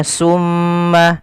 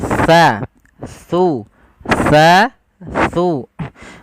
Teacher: Makhrajnya ujung lidah kita menempel dengan gigi seri atas kita. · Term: huruf tha